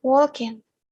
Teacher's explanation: Some of the characteristics of the Irish accent are eliminating the letter G at the end of words such as walking